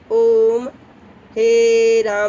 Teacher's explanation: प्लुत स्वर जो है वो 3 गुने समय में बोलना पड़ता है, यानी उतने आवाज़ को आपको टानना है कस के